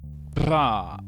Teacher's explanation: La consonne battue bilabiale voisée